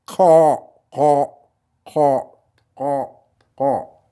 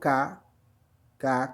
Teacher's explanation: c'est comme un K, comme kilo K, mais c'est au fond de la gorge